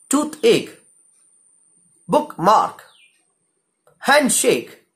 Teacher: Both syllables, they come together and both are stressed. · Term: spondee